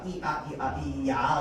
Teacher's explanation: 오 모양으로 만든 상태에서 빠르게 아를 발음하면 어떻게 되는가? 와가 되는 거죠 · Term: 이중모음